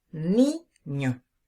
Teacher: aguda vemos el caso de la palabra niño decimos ni no la fuerza de la voz está sobre la penúltima sílaba · La fuerza de la voz está sobre la ni. Penúltima sílaba, palabra llana.